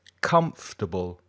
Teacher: And the first syllable is stressed. Se dice más fuerte, comfortable, comfortable.